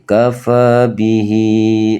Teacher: Jadi cara bacanya ha ini ketika dia kasroh itu harus dibaca panjang. Jadi kafa bihi, tidak boleh teman-teman kok bacanya di sini pendek.